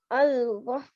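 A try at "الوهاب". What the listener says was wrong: Beautiful.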